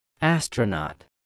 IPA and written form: ˈæstrəˌnɑt (astronaut)